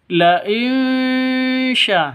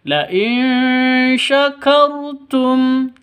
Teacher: samar didengungkan siap-siap ke huruf syinnya